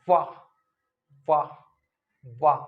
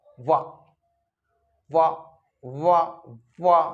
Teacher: हमारा जो निचला होंठ है वो ऊपरी दांत को टच करता है इसमें, तो दांत और होंठ का मिलन है। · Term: दंत्योष्ट व्यंजन